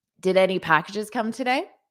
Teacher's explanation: And then my intonation is rising a little bit at the end. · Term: rising intonation